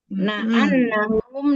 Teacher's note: non tasdid gunah musyadadah ditahan dengungnya tiga harakat di rongga hidung